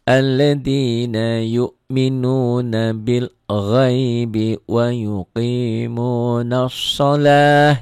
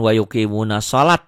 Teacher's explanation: Ta marbutoh ya. Apabila dihentikan bunyinya berubah menjadi ha.